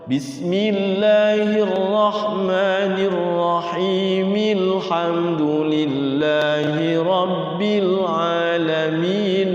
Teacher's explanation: Jangan sampai dipanjangin mad ahli sukunnya kalau diwasal.